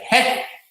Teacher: When it's high and close, like he, there is much less air goes out. And so the energy flows in a different way.